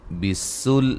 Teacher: سین کو باریک سیٹی سے